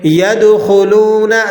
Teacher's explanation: دال پہ آپ قلقلہ کریں گے، یہ قلقلہ کبیرہ کہلاتا ہے